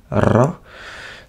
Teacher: il faut faire vibrer la pointe de la langue contre le palais.